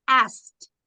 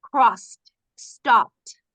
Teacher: Imagínese que hay una T ahí. En lugar de esa ED hay una T.